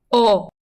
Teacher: It's not O, it's O. Deeper, kind of in the back of your throat.